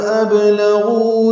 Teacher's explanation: غین پر پڑھیں گے، غو واو مدہ ہے، 2 حرکات لمبا کریں گے · ابلغوا میں با ساکن ہے، یہ بھی قلقلہ ہے. لام کو جلدی پڑھیں گے.